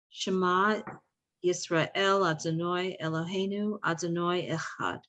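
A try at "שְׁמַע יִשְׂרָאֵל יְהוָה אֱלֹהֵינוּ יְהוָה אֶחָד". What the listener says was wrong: Perfect, thank you.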